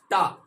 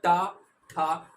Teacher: आपकी जीभ ऊपरी छत के अगले भाग से टच हो रही है। टा ठा, आप बोल के देखिएगा, आपको एहसास हो जाएगा। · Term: मूर्धन्य